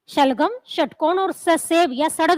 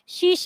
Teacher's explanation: जब भी इनका उच्चारण करते हैं मुंह के अंदर एक संघर्ष यानी कि एक रगड़ पैदा होती है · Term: संघर्षी व्यंजन